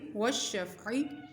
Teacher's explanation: وشف شین فا زبر شف پڑھیں گے، عین زیر عین، وشفعی عین کی آواز حلق سے ادا ہوگی